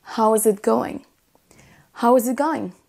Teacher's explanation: vous n'entendrez quasiment jamais le is en entier. On dira quasiment toujours how's.